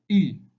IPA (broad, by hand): ɪ